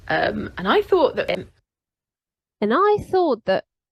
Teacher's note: You anticipated that I would not be stressed, but the way she pronounces it, you can clearly hear that she does stress the I.